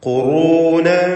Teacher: ഖാഫിനും റാഇനും തഫ്ഖീം കൊടുക്കണം. തടിപ്പിച്ചുച്ചരിക്കുക ഖാഫും റാഉം. ഖുറൂനൻ ഫതതാവൽ തൻവീനും ശേഷം ഫാഉം ഇഖ്ഫാ ഹഖീഖി നൽകി വ്യക്തമാക്കി മണിക്കുക.